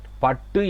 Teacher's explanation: கசட தப்பறங்கிற வல்லினமையின் மேல் அடுத்து என்ன வந்திருக்கணும்? உகரம் வருது என்று சொன்னா அந்த உகரம் தன்னுடைய ஒரு மாத்திரை அளவிலிருந்து அரை மாத்திரை அளவுல குறைஞ்சொலிக்கும். அதை தான் நாங்க குற்றியல் உகரம் என்று சொல்லி சொல்றோம்.